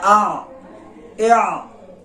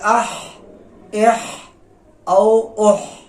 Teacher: ورپسې دریم نمبر مخرج چې دی هغه وسط حلق دی. د دې نه عین او حا ادا کېږي بغیر ټکو والا، لکه ا اع، او دارنګ اح اح او اح.